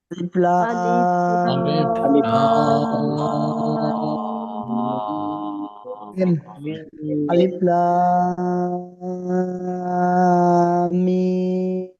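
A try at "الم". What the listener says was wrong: না না, খেয়াল করি, লাম মিম এভাবে বলতেছেন, গুণা হবে লাম, এভাবে ধরে রাখতে হবে কতক্ষণ, লাম মিম, পরে ছাড়তে হবে।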